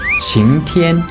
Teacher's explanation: 晴 second tone. 天 first tone.